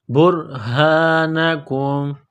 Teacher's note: با کو را کے ساتھ پلس کرنا ہے، را کو موٹا کرنا ہے